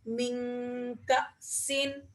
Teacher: نون ساکن کے بعد کاف آ رہا ہے، تو یہاں پر بھی ہم اخفا کریں گے